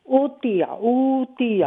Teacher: حمزہ کے بعد واو مدہ ہیں حمزہ کو لمبا کیجئے آپ